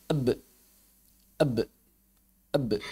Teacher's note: huruf ba ketika disentuhkan di bibir maka dia dilepas kembali